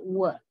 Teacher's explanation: when you say this sound, your tongue is raised in the velar region, but you also have strong labialization. Labialization means lip rounding. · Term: velar glide